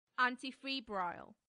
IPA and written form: ˌæntɪˈfiːbraɪl (antifebrile)